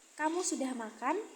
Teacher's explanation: Ditandai dengan kenaikan nada pada akhir kalimat. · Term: intonasi naik